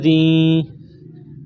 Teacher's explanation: ذال کو نرم پڑھیں گے، زبان کا سرہ تھوڑا سا باہر نکالیں گے۔